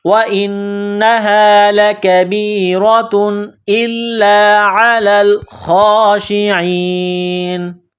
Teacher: جب یہاں سٹاپ کریں گے، وقف کریں گے تو نون کو سائلنٹ کریں گے